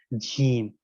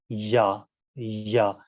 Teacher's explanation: تینوں حروف کے لیے زبان کو تالو سے آپ کو ٹچ کرنا ہے، تالو کے درمیانی حصے سے